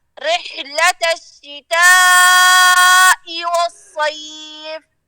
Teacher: حرف الحاء میں تھوڑا سا اور زور لگائیں ہا کی طرف نہیں جائے